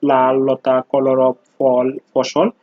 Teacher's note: দুই পাশ দিয়ে বায়ু নিঃসৃত হয় বলে একে পার্শ্বিক ধ্বনি বলা হয়।